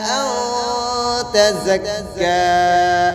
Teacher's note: نون ساکن کے بعد حروف اخفا کی تا گئی ہے تو یہاں پر اخفا کے ساتھ غنہ ہوگا